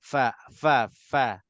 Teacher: Fa mana tempat keluarnya bibir dengan gigi gigi atas dengan bibir bibir bawah pergi sentuh gigi atas depan atas